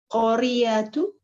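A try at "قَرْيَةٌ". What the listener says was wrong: Aywa, qaryatun ya. Jadi jangan ragu-ragu untuk mentanwinkan ya huruf terakhir.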